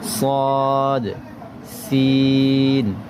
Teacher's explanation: জিহবার আগা সামনের নিচের দুই দাঁতের পেট ও আগার সাথে লাগিয়ে শীষ দিয়ে উচ্চারিত হয়